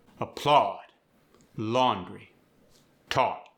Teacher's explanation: The ah sound, as in applaud, laundry, taught, get a deeper, rounded ah.